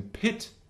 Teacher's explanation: So front high sound would be I as in pit.